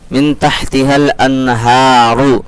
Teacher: یہاں پر بھی نون ساکن کے بعد تا آ رہا ہے، حروف اخفا کے 15 حرفوں میں سے تھوڑا سا کھینچ کر کے پڑھیں گے، نون کی آواز کو ناک میں چھپا کر کے پڑھیں گے